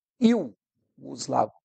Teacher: ditongo ele tinha que ser um ditongo decrescente I os Lago o i é mais forte o u tem uma tonicidade menor